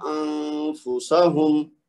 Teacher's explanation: کیونکہ آگے فا ہے، ہم یہ پڑھ چکے ہیں کہ نون ساکن کے بعد اگر حروف اخفا میں سے کوئی آئے تو پھر اس کا 2 حرکت تک غنہ کر کے اخفا کریں گے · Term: نون کا اخفا